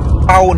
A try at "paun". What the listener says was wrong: Pound. P-A-U-N. Pound. No, nggak ada D-nya. Pound.